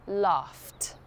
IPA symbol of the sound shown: t